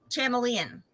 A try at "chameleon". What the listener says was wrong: Oh, you did the the CH sound. instead of making it a K.